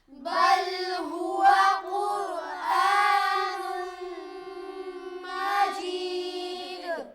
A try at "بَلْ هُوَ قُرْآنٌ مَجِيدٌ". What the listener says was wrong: بل لام کو ہلانا نہیں ہے. بل قلقلہ نہیں ہوگا یہاں پر. بل ہوا, ہوا واو پر ہونٹ گول ہوں گے. قر قاف موٹا پڑھیں گے, را کو پر کریں گے. آ نہیں ہوگا.